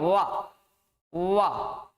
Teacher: जब हम इसका उच्चारण करते हैं तो हमारे जो नीचे वाला ओंठ है वो ऊपर वाले दांतों से लगेगा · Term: दंतोष्ठ